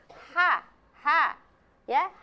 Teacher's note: huruf ha itu tempat keluarnya itu dari tenggorokan bawah